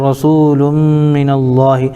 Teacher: رسول من اللہ میں لام کے اوپر دو پیش کی تنوین ہے, تنوین کے بعد حروف یومن میں سے میم آ رہا ہے اس لیے میں ادغام یرملون مع الغنہ ہوگا